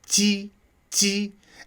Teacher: Ji does at least have an attack to it. It's just less intense than qi